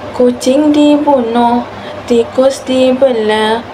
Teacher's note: semua suku kata diucapkan dengan cepat tanpa sebarang penahanan vokal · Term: pemandekan vokal, pemendekan vokal